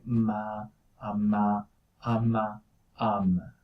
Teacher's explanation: both of your lips are touching each other, so that's what happens with M. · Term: bilabial